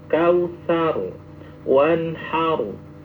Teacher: Di Al-Kautsar itu berakhiran dengan ra mati. Maka itu ditafhim.